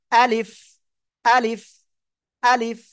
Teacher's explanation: মুখের খালি জায়গা থেকে উচ্চারিত হয়